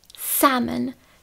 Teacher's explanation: Tam zase nevyslovuju vůbec to l a mám tam otevřené a-e. Tady toto a-e vyslovuju tak, že si pusu nachystám na e a otevřu ji ale pořádně i do vrchu.